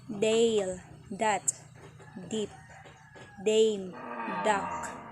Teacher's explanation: Voiced alveolar stop D.